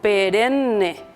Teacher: Vemos una secuencia de consonante N, pero cada una duplica el sonido de la N.